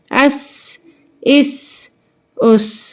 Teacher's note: سین جو ہے سیٹی والی آواز نکلتی ہے سین میں